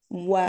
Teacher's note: Iya, boleh tolong jabarkan posisi makhraj dari huruf waw beserta dengan urutan sifatnya. Wow, wow itu dari keluar dari dua bibir. Wow, dimonyongkan.